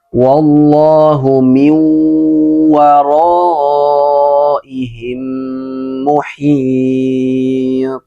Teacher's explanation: Jadi mi didengungkan naik ke hidung gunanya dengungnya naik ke hidung dan ditahan. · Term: idgham biguna